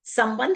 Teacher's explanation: संबंध एक बहुत अच्छा शब्द है। उसमें एक बार म की आवाज आती है और ब के बाद न की साउंड आती है।